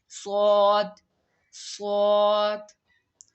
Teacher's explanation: صاد پڑھتے وقت حلق سے آواز موٹی نکالیں گے تو صاد ادا ہوگا